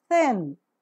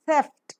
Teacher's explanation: the tip of the tongue makes this light contact with the upper teeth then leaves and leaving a narrow space in between through which the air that is coming out from the lungs passes out with audible friction the vocal cords are drawn wide apart during the articulation of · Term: voiceless Dental fricative